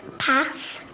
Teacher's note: This child uses the short vowel sound A, which is within her accent. Pash. This child sounds out correctly, but then confuses the digraph and pronounces pash instead of path.